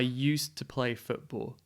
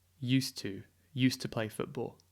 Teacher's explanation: so it's almost like one word we say it's so quickly used to you can't really even hear the D